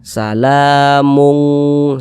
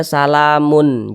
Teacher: cara membaca ikhfa itu dibaca samar, kemudian dia juga didengungkan, digunahkan